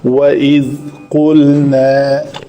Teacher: قاف کا مخرج ہے کوا جب بالمقابل تالو سے لگے